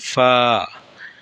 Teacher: নিচের ঠোঁটের পেট সামনের উপরের দুই দাঁতের আগার সঙ্গে লাগাইয়া ফা উচ্চারিত হয়।